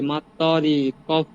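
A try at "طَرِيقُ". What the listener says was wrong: তটা একটু টান হবে না বা তরিকু।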